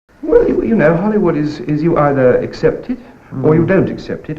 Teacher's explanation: he often drops many of the Ts and the ending consonants. He just rambles on.